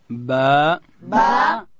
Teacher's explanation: دا به د دواړو شونډانو د مشلیدو څخه ادا کوو، د لندې حصې څخه.